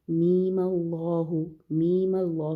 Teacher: ایک تو یہ ہے لام کو ہم 6 کاؤنٹ لمبا کریں گے، میم کا ادغام یعنی کہ میم میں ہم ادغام کے جو 2 حرکہ غنہ ہے وہ ادا کریں گے، اور پھر میم کو ہم 6 کاؤنٹ لمبا کرنے کی بجائے میم اللہ، میم کو ایک زبر دے کے ہم آگے حمزۃ الوصل سے جوڑیں گے